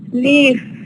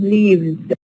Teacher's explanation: here we have the F becomes a v we have a change from voiceless to voice